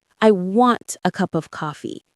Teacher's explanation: The stress is on coffee. Everything else flows softly toward it.